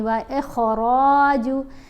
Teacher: را کے اوپر زبر ہے، ساتھ الف ہے، یہ حرف مدہ ہے، اس کو ہم نے ایک الف جتنا لمبا بھی پڑھنا ہوتا ہے۔